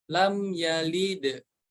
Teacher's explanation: menarik anggota ke bawah lam yalid yalid yalide yalid kebawahin yalid huruf Dal berharakat sukun harus dipantulkan